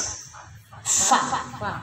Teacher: Bibir bawah, perut bibir bawah dengan ujung gigi depan atas. Jadi enggak pa bunyinya, tapi ada tiupan fa, ya.